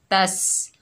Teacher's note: जैसे वाइदिस, ता के ऊपर ज़बर है, आगे सीन साकिन है, ता को सीन साकिन से मिलाएंगे, सीन को सख्ती और सीटी से अदा करेंगे।